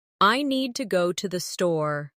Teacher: The stress is on need and store, while to and the are softer and faster. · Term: rhythm